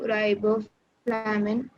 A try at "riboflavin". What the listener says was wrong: Not flamin, riboflavin. FLAVIN.